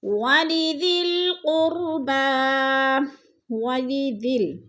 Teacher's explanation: ذال کو ہم نے لام کے ساتھ ملا کر پڑھنا ہے